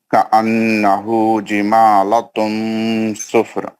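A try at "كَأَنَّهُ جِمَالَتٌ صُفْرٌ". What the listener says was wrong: پھر آپ جمالاتن کہاں سے پڑھ رہے تھے؟ لام پہ نہیں ہے نا کھڑا زبر. جمالتن ہے نا, جمالتن صفر.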